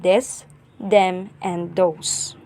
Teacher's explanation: the beginning th sound may be replaced with d